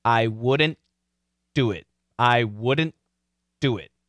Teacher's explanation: even actually a stop t would be better instead of wouldn't we can say wouldn't but we just stopped the t · we just stop the T, right? I wouldn't, but we don't finish.